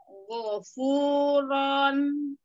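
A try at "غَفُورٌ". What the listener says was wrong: Gofuron. Kalau ini nariknya dari roh, rohnya dibuka, ron. Bukan gofuron. Bukan pas nunnya, pak. Rohnya harus dibuka. Gofuron.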